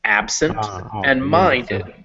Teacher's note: both those words take the traditional english stress on the first syllable